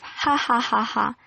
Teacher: you find nasality in post laughter, the kind of ha ha ha ha sound that you never get, and you could not do if you were laughing involuntarily.